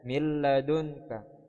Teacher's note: Tulisan aslinya adalah min ladunka. Tapi karena di sini ada nun sukun bertemu dengan huruf lam, maka suara nun melebur, ya, menjadi huruf lam, sehingga nun tidak dibaca lagi, tetapi dibaca mil ladunka, ya, seperti itu. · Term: idgham bila gunnah